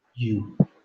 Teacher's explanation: el sonido de la u no es una u, sino que empieza por yod. You.